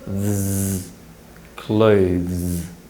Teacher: To produce the following z sound, simply relax the tip of the tongue and raise the blade of the tongue towards the alveolar ridge. You should be able to transition between these sounds with relatively little tongue movement because they're produced in a similar way and in a similar part of the mouth.